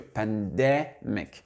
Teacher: Et l'accent tonique, il est au milieu.